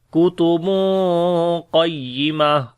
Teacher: تنوین کے بعد قاف آ گیا جو کہ حروف اخفا میں سے ہے اور موٹا بھی ہے، تو اس وجہ سے یہاں پر جو اخفا ہوگا وہ ہیوی ہوگا ، تو پڑھیں گے کتب قیمہ، قاف کو بھی موٹا پڑھیں